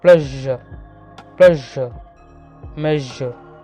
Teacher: പെലറ്റോ അൽവിയോള, ഫ്രിക്കേറ്റീവ്, voiced. പെലറ്റോ അൽവിയോള, tip of the tongue and teeth റിച്ച് ആർ involved. ഫ്രിക്കേറ്റീവ്, air passes through the narrow space between them.